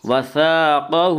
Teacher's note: قاف کو پر پڑھیں گے، قاف حروف مستعلیہ میں سے ہے، حروف مستعلیہ 7 ہیں جن کا مجموعہ خص ضغط قز ہے، یعنی خا صاد قاف ضاد طا قز قاف ضا، یہ 7 حروف ہیں، یہ ہمیشہ ہر حال میں پر پڑے جاتے ہیں۔